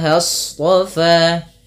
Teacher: shad itu pangkal lidahnya terangkat dengan memiliki sifat yang namanya sifat isti'la.